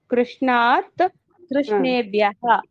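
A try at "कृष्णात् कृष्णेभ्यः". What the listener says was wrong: Correct అండి.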